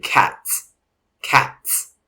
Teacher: basically an aspirated t rapidly followed by s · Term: ts sound